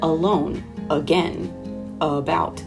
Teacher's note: we have this uh at the front and the second half is getting the stress